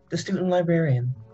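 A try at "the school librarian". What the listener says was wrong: Ding. You said the student librarian. yes, yeah. You did.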